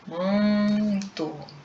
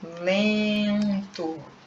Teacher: Se você colocar a mãozinha no ouvido, testa lá, todo mundo com a mão no ouvido, Você vai perceber que o som vai sair pelo nariz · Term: vogais nasais